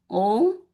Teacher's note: we can consider this as like a nasal O sound. O. So the sound has to come from your nasal.